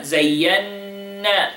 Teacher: 2 seconds حرف غنة مشدد